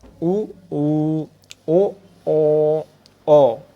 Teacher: ऊ या बड़ा ऊ बोला तो आपके ओठों की स्थिति गोल हो रही होगी।